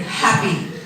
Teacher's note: the H, strongly aspirated, happy.